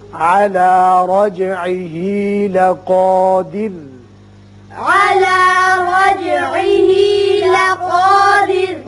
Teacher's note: را پر کریں گے، اوپر زبر ہے، جیم کی صفت قلقلہ ادا کریں گے. لقا قاف پر ہوگا الف پی، اور را ساکن ہے، پیچھے زیر ہے، اس لیے برا باریک ہوگا.